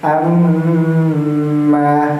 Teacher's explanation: Walaupun mulut kita dirapatkan, tetapi ada hembusan udara yang sedikit keluar dari hidung kita, itu menandakan bahwa bacaan kita telah dengung sempurna ya, bukan ya. · Ketika kita dipecat hidungnya ya tidak bisa, karena idgham mutamasil ini termasuk idgham yang bi gunnah dengung yang dengan disertai gunnah dari hidung. Ya, ada aliran angin yang keluar di antara kedua lubang hidung kita.